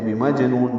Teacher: بمجنون جیم ساکن پہ قلقلہ ہے، نون میں نو کو لمبا کر دیں گے اور نون ساکن پہ اظہار ہوگا وقفاً، بمجنون ملانا ہو تو بمجنونیوں، آگے وہ ہے ادغام ہوگا۔